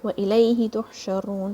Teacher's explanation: Ha is going to come from the center of your throat.